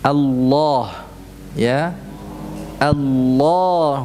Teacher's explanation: lam yang dibaca dengan tebal kesannya seperti ada waunya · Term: lam tafkhim